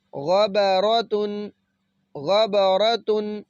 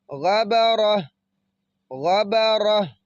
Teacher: جب ہم یہاں پہ وقف کریں گے تو اس تا کو ہم نے پھر ہا بنا دینا ہے، اس کو ہائے ساکنہ کہتے ہیں۔